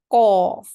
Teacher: we have to lift the back of our tongue upwards towards the upper palate